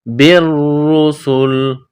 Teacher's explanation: کو را کے ساتھ ملانا ہے، را کو دبانا ہے، بالرسل، سین میں سیٹی کی آواز پیدا کرنی ہے